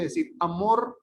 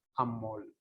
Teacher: el vibrante simple se realiza como el lateral este lateral y se llama lateralización en vez de decir amor